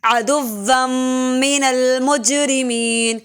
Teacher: عدوا شد کی سختی کریں گے اور میم مشدد پہ غنہ ہوگا